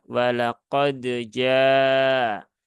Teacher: qalqalahnya Jangan berlebihan Jangan sampai ada tambahan Hamzah di belakang huruf Dal · dalnya harus ada qalqalahnya kemudian baru masuk ke huruf Jim